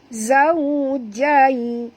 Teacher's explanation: Zau muncungkan mulut tuan-puan. Waw sifatnya lin. Jai pun sama, huruf ya pun sifatnya lin lembut.